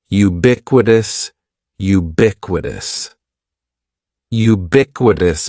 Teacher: Ubiquitous. And the stress is going to be on that second syllable.